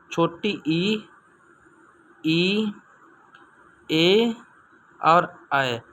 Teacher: जिन स्वरों का उच्चारण जीभ के अग्रभाग से किया जाता है उन्हें अग्रस्वर कहते हैं